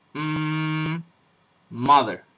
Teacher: that exist in in English for example this sound right here a bilabial nasal this is the m sound